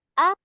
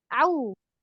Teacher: mesti jelas perbedaan antara kita ngucapin hamzahnya yang di awal a dengan ainnya